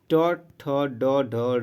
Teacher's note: जीभ जो है मुड़ के और मूर्धा को टच करेगी। ठीक है, तो दोस्तों उसे ही मूर्धा कहा जाता है। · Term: मूर्धन्य व्यंजन